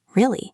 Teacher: Pitch is how we show emotion. If you say really with a falling pitch, really, it sounds like you don't care or you are disappointed. If you say really with a rising pitch, really, it sounds surprised.